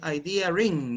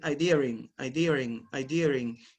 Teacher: an intrusive er is actually between idea and in so you insert the sound